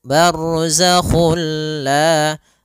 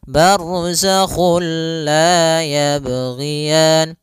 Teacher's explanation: Nah, idgham bila guna juga sendiri itu idgham yang kita namakan juga idgham kamil, yaitu kita memasukkannya secara utuh, secara seluruhan kepada huruf lam sehingga tidak menyisakan sedikit daripada bunyi huruf nunnya. Ya, sehingga langsung masuk barzakhul la, dan dia bila gunnah berarti tidak boleh disertai dengan gunnah, tidak boleh ada penahanan. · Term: idgham bila gunnah